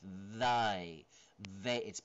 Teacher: voiced interd dental fricative okay interdental So it's in between the teeth. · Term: Voiced interdental fricative